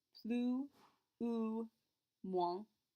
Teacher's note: 2 S's we don't pronounce, which means the end of plus sounds exactly like that oo in the middle.